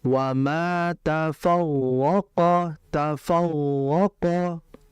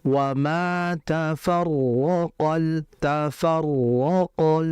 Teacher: Maka dia harus diberikan getaran. Satu sentuhan ke atas itu akan ee berefek dua getaran. · itu enggak ada getaran disebabkan apa? Lidahnya tidak menyentuh langit-langit. Maka dia harus diberikan getaran.